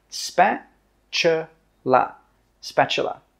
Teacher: The T sound is actually pronounced as a CH sound.